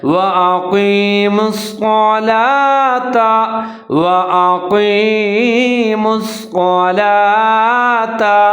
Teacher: وَأَقِيمُوا الصَّلَاةَ، واو کے اوپر زبر ہے، حمزہ کے اوپر زبر ہے، قاف موٹے والا ہے، اس کو آپ نے پر کر کے پڑھنا ہے، اس کے نیچے زیر ہے، آگے یا ساکن ہے تو قاف اور یا قاف زیر یا کی ملا کے پڑھیں گے۔ · صاد کے اوپر زبر اور تشدید ہے تو صاد کو پر کر کے پڑھیں گے، ادغام کریں گے